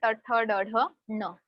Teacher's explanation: सो ट बोलते वक्त आप फील कर सकते हो टंग थोड़ी सी फोल्ड हो रही है, and we are touching that part मूर्धा, इसीलिए मूर्धन्याहा।